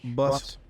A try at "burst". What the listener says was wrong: No, it's not bust, it's burst.